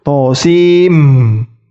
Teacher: Cara membacanya to sin mim. Ingat, nun sukunnya tidak dibaca langsung, dijadikan mim sukun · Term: idgham bi gunnah